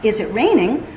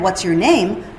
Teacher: is it raining goes up and what's your name goes down